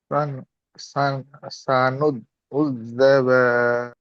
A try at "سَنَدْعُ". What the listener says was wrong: সানুদ নয়, সানাদ। সিন জবর সা, নুন দাল জবর নাদ, সানাদ।